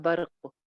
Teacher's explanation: برق جو ہے وہ قاف پہ کلکلا آ جائے گا